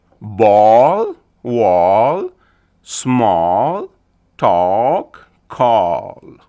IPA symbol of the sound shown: ɔː